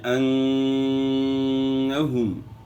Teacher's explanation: یہاں نون مشدد ہے، اور جب بھی نون مشدد یا میم مشدد آ جائے تو وہاں آپ نے غنہ ادا کرنا ہے، اور غنہ جو ہے ناک کی ہڈی سے ایک الف کی مقدار کے برابر آپ نے ادا کرنا ہے. یعنی انہم، ایک الف کی مقدار کے برابر آپ نے ناک میں آواز کو روکنا ہے.